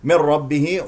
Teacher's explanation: نون مع الراء ادغام بغير غنه